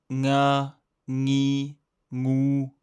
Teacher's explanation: Ici, la langue ne touche pas le palais comme pour un N. C'est un son nasal qui vient du fond de la gorge. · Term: Le son nga